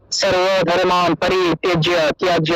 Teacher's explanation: অর্থাৎ আমরা নর্মালি যখন আমরা গীতা পড়বো যতগুলো ব পাবো সবগুলোকে ওয়া হিসেবে উচ্চারণ করবো, অর্থাৎ ঠোঁট না লাগিয়ে ব উচ্চারণের মতো